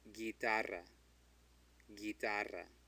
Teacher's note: So a U between a G and an I is silent.